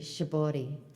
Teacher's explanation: I can't. You don't, in Japanese, you don't really say an R, so it sounds more like a D